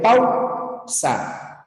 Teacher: tenemos vocal abierta primero la abierta tónica la siguiente la vocal cerrada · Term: diptongo